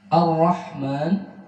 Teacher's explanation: ra di sini getarannya satu dengan dibaca samar karena bertasydid